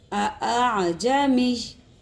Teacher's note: ہاں، اس کو ایک حمزہ کو اس تحصیل کے معنی ہے نرمی کرنے کے. پہلے حمزہ کو جھٹکا نہیں دیں گے اگلے حمزہ کو، بلکہ نرمی کے ساتھ پڑھیں گے. تحصیل کے معنی ہے نرمی کے ساتھ پڑھنے کے. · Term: تسہیل